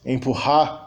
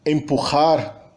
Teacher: a nossa realização é muito mais glotal, ela é muito mais suave do que a realização velar